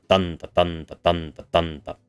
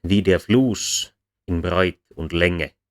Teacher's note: the trochee, which begins with the heavy and ends with the light syllable.